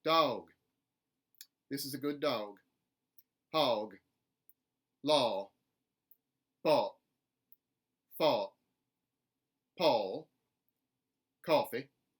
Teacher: A backward C, a little bit more length, and maybe a schwa off glide. Maybe some soft lip rounding on the end, but no tension in the lips. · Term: backwards c